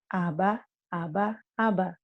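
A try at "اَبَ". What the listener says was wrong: jangan ada haknya. Abah jangan abah. Ayo lagi diulang.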